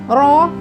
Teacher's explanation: apabila ro itu berharokat fathah atau a, maka dibaca tebal.